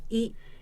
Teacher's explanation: Japanese I. is called a high front vowel. Again, as the name tells you, when you pronounce this sound, your tongue is positioned at a higher level on the vertical dimension and at a front position on the front to back dimension.